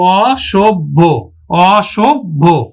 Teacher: এখানে ভটা হচ্ছে মহাপ্রাণ এজন্য ভয়ের আগে যে অল্প প্রাণ আছে সেটা আমরা কিন্তু দিলাম